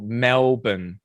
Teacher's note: the spelling, We but do. it's a schwa sound on that second syllable